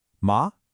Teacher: The tone is neutral. It's light. It's quick.